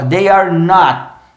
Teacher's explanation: Lembrando que esse T é preso, not. Trava a língua no céu da boca, ó. They are not.